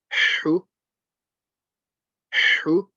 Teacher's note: Now the ha, again, from the middle of the throat.